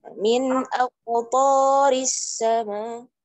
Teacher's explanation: aqtari to-nya panjang 2 harakat ya